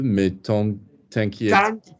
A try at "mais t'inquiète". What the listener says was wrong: Nasals need work. There's different nasals. On, un, une, yan, yen, in, un, in. Yeah, there's different nasals. The minute you guys go to nasals, you go to your favorite nasals, and the favorite one is always on.